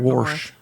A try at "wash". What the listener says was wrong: There's an R in it if you live up north.